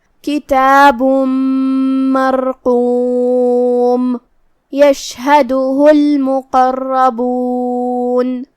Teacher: اگر پچھلے والے آیت کو یہ والی آیت کے ساتھ پڑھے تو جو کہ میم پہ تنوین پیش ہے، پھر یہاں حرف الیا آتا ہے، تو یہاں بھی حکم ہوا ادغام بغنہ. تو ہم یہ تنوین کو یا میں ملا کے غنہ اور تشدید کے ساتھ یہ حکم کو ادا کریں گے